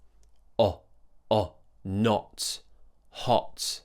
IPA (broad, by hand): ɒ